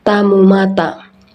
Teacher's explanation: T. Hampatan letup alevolar tak bersuara. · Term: Hambatan letup alveolar tak bersuara